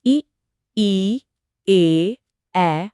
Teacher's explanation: महसूस कीजिए कि आपकी जीभ का अगला हिस्सा एक्टिव है। इ ई ए हां जीभ आगे की तरफ उठ रही है। · हां जीभ आगे की तरफ उठ रही है। इसीलिए इन्हें अग्र स्वर कहते हैं।